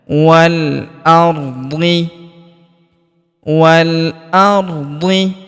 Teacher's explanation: huruf wa langsung sambung ke huruf lam yang berharakat sukun. Alifnya tidak dibaca. Alif lam qamariah.